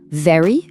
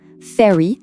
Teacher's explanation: very lèvres plus dent. Fairry lèvres plus d mais sans vibration